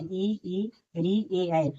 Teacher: इनकी संख्या पांच होती है जो अग्र स्वर यानी जीभ के अगले भाग से बोले जाते हैं